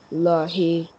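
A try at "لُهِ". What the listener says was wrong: Lohi. When lam join spoon, low. If you remember that in the first last time we learned that whenever we have a spoon, we join that alphabet with the previous vowel.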